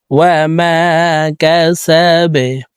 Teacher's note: واو زبر واه، ميم ألف زبر ما، وما، كاف زبر كه، سين زبر سا، وما كسا، با زبر با, বা কলকলার হরফ নিচের দিকে ধাবিত করে বাকে সাকিন করব